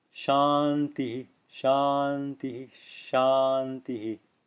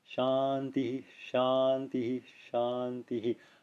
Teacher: a clear Visarga echo of the preceding vowel on each of the three shantis